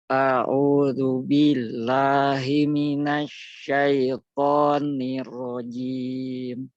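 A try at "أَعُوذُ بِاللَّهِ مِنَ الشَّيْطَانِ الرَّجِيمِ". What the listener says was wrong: Lamnya tebal lagi. Billah.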